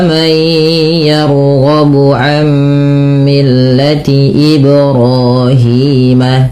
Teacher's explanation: ro dan hi kedua-duanya panjang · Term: mad tabi'i